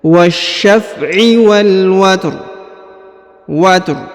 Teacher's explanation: huruf rnya dibaca rendah atau dibaca tipis